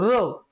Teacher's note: र जेव्हा मित्रांनो आपण रचा उच्चार करतो र, तर त्यावेळेस जिभेचं काय होतं मित्रांनो, कंपन होतं. म्हणजे आपली जीभ व्हायब्रेशन करते, म्हणून त्याला काय म्हणायचं, कंपित वर्ण